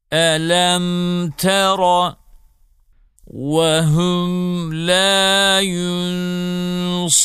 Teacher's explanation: 3 sakin mimden sonra mim ve ba dışında bir harf gelirse sakin mimin ızhar olur bu durumda Mim açık olarak okunur Elem Tera ve hüm yünsarun ilahukum ilahün vahidün evelem yerav